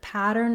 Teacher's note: we have first syllable stress so the pa syllable is long